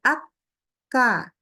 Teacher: karena dia tegas syiddah antara makhrojnya saling bertemu bertabrakan jadi dia pasti berhenti ak ka ya Enggak mungkin dia dibaca ak ke